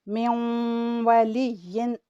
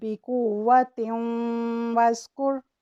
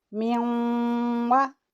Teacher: نون کو واو سے اس طرح ملاتے ہیں کہ اس کی آواز ناک کی جڑ کی طرف جاتے ہوئے 2 حرکات جتنی لمبی ہوگی